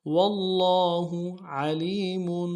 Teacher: عین کو گہرائی سے ادا کریں گے، لام کو یا کے ساتھ ملانا ہے، یا مدہ کے امتداد میں کھینچیں گے، میم کے اوپر تنوین غنہ کریں گے۔